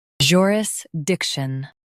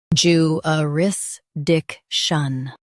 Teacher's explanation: In US, stress dic. In UK, stress joo.